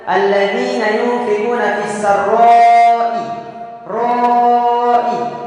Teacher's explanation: Dalam kaidah hukum tajwid menjelaskan dikarenakan adanya mad tabi'i bertemu dengan huruf hamzah, maka cara membacanya itu dibaca panjang wajib 5 harakat. Dalam kaidah hukum tajwid nama hukumnya yaitu mad wajib munfasil.